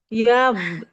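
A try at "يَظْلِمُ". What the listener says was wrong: Jangan dipantulkan. Biar enggak. yang ini, ujung lidahnya ditahan ke ujung gigi dari atas. Ujung gigi seri atas.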